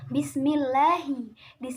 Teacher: hukum bacaan lam jalalah tarqiq karena lafadz Allah didahului oleh harakat kasrah